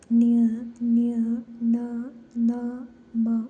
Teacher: ಮೂಗಿನ ಸಹಾಯದಿಂದ ಉಚ್ಚರಿಸುವಂತಹ ವ್ಯಂಜನಗಳಿಗೆ ಅನುನಾಸಿಕ ಅಕ್ಷರಗಳು ಅಂತ ನಾವು ಕರೀತೀವಿ